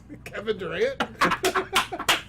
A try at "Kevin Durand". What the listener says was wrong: It's Durand, not Durant.